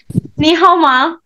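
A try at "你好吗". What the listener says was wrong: Good.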